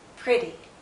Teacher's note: Here, it's not followed by anything, but it's not stressed. This first half of the word, this first syllable, is stronger. This second half is weaker. It's not stressed. So when you have this vowel sound in an unstressed syllable, it's a shorter sound.